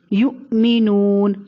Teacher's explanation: نون واو پیش نو، واو ساکن سے پہلے پیش، مد اصلی ہے اس لیے اس کو لمبا کر کے پڑھیں گے